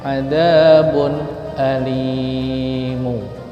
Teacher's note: Bunnya tetap dibaca n dan pendek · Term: izhar